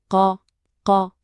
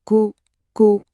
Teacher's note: On se concentre bien sur ce son qui part du fond de la gorge